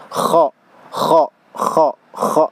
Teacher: ada hamas ya, jadi ada udara yang keluar. Kha ada udara yang keluar.